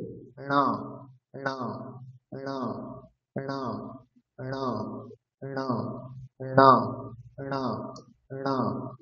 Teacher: তারপরে হচ্ছে ট বর্গ মানে মূর্ধা, মূর্ধাতে জিহ্বা স্পর্শ করবে এবং তার সাথে নাকে উচ্চারণ হবে পঞ্চম বর্ণের, তাহলে উচ্চারণ হয়ে যাবে ণা ণা ণা ণা ণা ণা ণা ণা ণা।